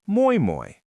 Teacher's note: In Finnish, the stress is like a heavy hammer that always hits the first syllable.